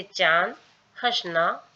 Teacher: स्वर को नाक से उच्चारित किया जाता है। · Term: चंद्र बिंदु